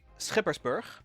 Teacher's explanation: now in dutch we say skippersburg with that lovely guttural sound · Now in Dutch we say Skippersburg, with that lovely guttural ch sound. In order to preserve your sanity, I've heard most people just say Skippersburg, and that is perfectly fine.